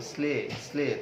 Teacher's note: তালব্য শ ল, কিন্তু উচ্চারণ করছে দন্ত স ল।